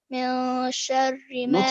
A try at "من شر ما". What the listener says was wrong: Not mil, it's من شاء.